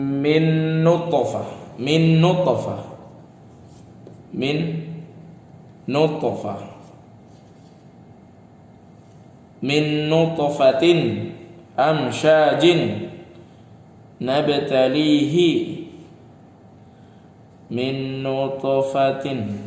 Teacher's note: ada nun bertemu dengan nun. Nunnya dibaca tebel jadinya. Min nutfatin gitu ya.